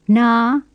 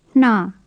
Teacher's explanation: The first has a normal N, and the second has a breathed N.